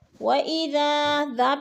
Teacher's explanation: یفسح اللہ لکم، وَإِذَا، ذا پہ جو ہے الف مدہ ہے، الف خالی سے پہلے ذال کے اوپر زبر ہے تو ادھر الف مدہ، الف مدہ کو ہم نے 1 الف 2 حرکات کے برابر کھینچ کر پڑھنا ہے